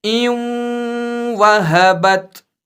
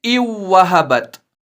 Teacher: اس نون ساکن میں جو نون کی آواز ہے وہ ساتھ رہے گی، یعنی اس کو اب پڑھیں گے ایوں وہبت، نہ کہ ایو وہبت۔ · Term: ادغام واو